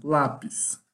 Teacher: Lápis termina em S e é um paroxítono, lápis. A sílaba mais forte é a penúltima sílaba.